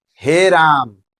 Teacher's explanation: इसके उच्चारण में दीर्घ स्वर से भी अधिक समय लगता है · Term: पुलत स्वर